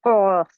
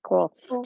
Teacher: The furthermost part of the tongue touches the opposite portion of the hard palate, blocking the passage of the throat. It is a thick sound.